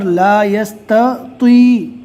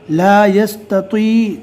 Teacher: تا کو باریک اور تو کو پور پڑھنا ہے. لا یستطیع تاکہ تا اور تو میں برابر فرق معلوم ہو جاوے.